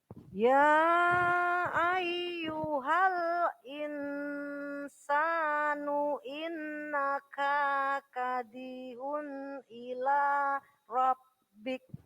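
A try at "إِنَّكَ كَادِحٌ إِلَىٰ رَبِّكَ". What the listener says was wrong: Nah, K-nya tadi kepanjangan, hati-hati. K yang pertama pendek, K yang kedua panjang.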